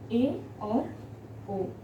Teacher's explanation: फिर है आपका अर्धसमृद्ध, जैसा कि अर्धविवृत था वैसे अर्धसमृद्ध यानी कि समृद्ध पूरा बंद हुआ मुख और अर्धसमृद्ध यानी कि आधा बंद हुआ, यानी कि थोड़ा सा मुख इसमें खुलता है।